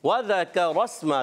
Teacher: वाव की अदायगी होती है होंठों की गोलाई से।